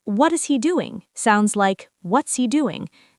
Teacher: He sounds like E when it's not stressed. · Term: disappearing sound